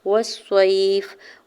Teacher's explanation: والصیف، واو کے زبر کو صاد مشدد کے ساتھ ملاتے ہوئے، صاد کے اوپر زبر آ گیا ساکن ہے تو یہاں پہ یا لین ہو رہا ہے، نرمی سے موڑتے ہوئے ادا کرنا ہے۔ فا کی زیر، یہاں فا کے نیچے زیر ہے اور آگے آیت کا وقف ہے، وقف کرنے کی صورت میں فا کو ساکن کر دیں گے۔